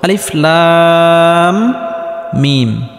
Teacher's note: কারণ কোন হরফের উপর যদি মোটা চিহ্ন থাকে তাহলে সেই হরফটি চার আলিফ পরিমাণ লম্বা করে টেনে পড়তে হয়। এই লাম হরফটি চার আলিফ পরিমাণ লম্বা করে টানার পর মিম হরফটির সাথে গিয়ে লাগবে। কারণ মিমের উপর তাজদিদ রয়েছে। · শুরুতে আলিফ, এই আলিফটি কোনো টান হবে না। লাম, এখানে লামটি 4 আলিফ পরিমাণ লম্বা করে টানতে হবে, কারণ কোনো হরফের উপর যদি মোটা চিহ্ন থাকে তাহলে সেই হরফটি 4 আলিফ পরিমাণ লম্বা করে টেনে পড়তে হয়।